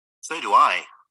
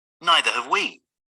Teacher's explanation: the stress is on I and we not on so or neither